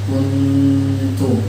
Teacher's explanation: Jadi kalau langsung ditekankan ujung lidah ke gigi, pangkal gigi yang atas itu dia bunyinya guna aja, tidak ada ikhfanya. Kuntum kan tidak ada ikhfanya, hanya berdengung saja guna. Tapi kalau tidak ketika selesai berdengungnya baru ditekankan kuntum.